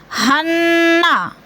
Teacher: नून मुशद्दद है, गुन्ना करेंगे, सख्ती से जमा कर पढ़ेंगे